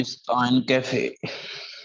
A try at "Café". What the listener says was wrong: कैफे नहीं है, काफे। अब कैफे में कॉफी नहीं है, ध्यान रख लेना, कैफेटेरिया है ये। वो KAFF होता है या CAFF होता है, राइट?